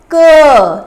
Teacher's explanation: व्यंजन हमेशा स्वर की सहायता से बोले जाते हैं जैसे क तो इसमें अ की साउंड आ रही है